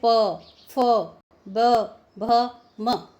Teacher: जब प वर्ग के वर्णों का हम उच्चारण करते हैं तो ओष्ठ जो है हमारे होंठ हैं वो आपस में मिलते हैं, जैसे प, फ, ब, भ, म।